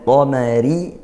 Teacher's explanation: ra-nya tarqiq, tipiskan karena dia kasrah